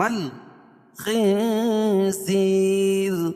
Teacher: نون ساکن کے بعد حروف اخفا کے 15 حرفوں میں سے زا ہے تو یہاں ناک میں آواز کو چھپا کر پڑھیں گے